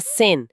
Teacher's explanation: Já thin, que é fino ou magro, termina com N. O som ressoa no nariz e continua vibrando.